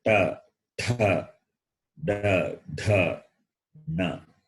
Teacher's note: When you say ta, ta, da, dha, na. So the tongue touch the cerebrum, the roof of the mouth. Therefore, they are called cerebrals. Murdhanyaha in Saṃskṛtam.